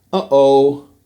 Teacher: glottal stop is the sound that you hear when people say, uh-oh, that, and that's a feature of several UK English accents.